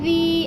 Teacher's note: یا مدہ کو ہم نے 1 سے 2 الف کے برابر کھینچ کر پڑھنا ہے